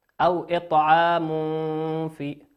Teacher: تنوين أتى بعده حرف الفاء، والفاء من حروف الإخفاء